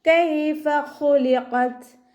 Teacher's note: മേലെ മുൻപല്ലിൻ്റെ അറ്റം താഴെ ചുണ്ടിൻ്റെ ഉൾവശത്ത് വെറ്റായ ഭാഗത്ത് വെച്ചിട്ട് ഉച്ചരിക്കുക.